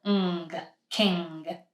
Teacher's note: we make an n, but with the back. G, ng. That's why this is one sound.